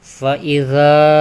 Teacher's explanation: dibaca 2 harokat, dihukumi mad tabi'i